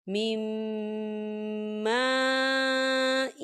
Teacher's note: نون ساکن ہے، نون ساکن کے بعد میم آ رہا ہے، تو یہاں پر ادغام ہوگا غنّے کے ساتھ